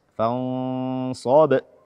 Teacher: qalqalah kubra di huruf ba sukun di akhir ayat